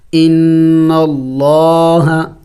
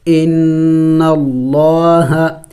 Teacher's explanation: لفظ اللہ سے پہلے زبر ہے تو لفظ اللہ کو موٹا پڑھیں گے